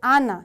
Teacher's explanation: 그리스어에서는 받침의 개념이 없기 때문에 두 개 나와도 아나 이렇게 얘기를 합니다